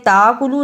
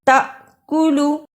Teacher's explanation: جس الف پر جزم ہو اس کو تھوڑا جھٹکا لگا کر پڑھنا ہے